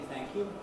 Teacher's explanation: we can have a weak oo-like thing, as in thank you, where there's a very weak oo